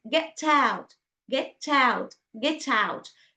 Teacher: we push t consonant sound to put next to the words which starts with a vowel